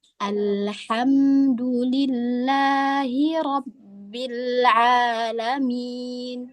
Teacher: Alhamdulillah itu tidak ada yang tebal. Itu semua huruf tipis. Jadi tidak boleh alhamdulillahi.